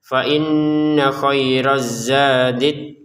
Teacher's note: Fainna di sini kita tekan ya sekaligus denggungan dua harakat